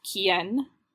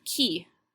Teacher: the word for who in Spanish is quien, and has that N still on the end. Whereas in French, you have qui, just Q-U-I, because they took the nominative form and Spanish took the accusative form.